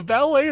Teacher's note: so the emphasis on the second syllable